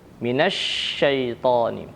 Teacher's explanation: Shin harus sempurna, ya, makhrajnya dan juga sifatnya. Shin itu makhrajnya dari lidah bagian tengah dengan langit-langit di atasnya. Dan shin memiliki sifat tafasyi, yaitu menyebarnya, ya, angin di dalam mulut